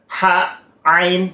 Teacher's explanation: Yang harusnya huruf ha itu makhorijul hurufnya di tenggorokan, wasatul halq ya, di tengah tenggorokan, itu bareng dengan huruf ain. Ha, ain itu sama letaknya di tengah tenggorokan.